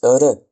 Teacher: Le r se prononce r. Alors on le roule comme le r arabe